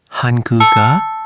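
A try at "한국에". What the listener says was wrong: The K sound moved. Almost. You started to separate them. Let it flow. Han-gu-ge. One smooth motion.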